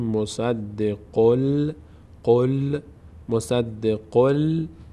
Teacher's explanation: این تنوین این ضمه دوم که بیانگر آن نون ساکن هست به جای نون ساکن باید لام تلفظ کنیم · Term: ادغام